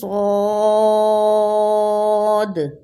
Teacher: صاد کو سین بالکل نہیں پڑھنا بلکہ موٹا پڑھیں گے